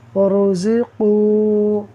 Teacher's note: قاف حروف مستعلیہ میں سے ہے تو یہ پر پڑھا جائے گا واو مدہ کے ساتھ